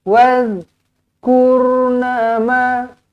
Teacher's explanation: Zal bukan qalqalah. Dal ya qalqalah. Zal tak ada. Zal matikan dengan bersih.